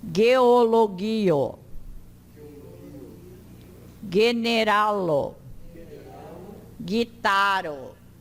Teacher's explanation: O G, o go, diante do e e do i, é pronunciado da mesma forma como diante do a e do o e do u.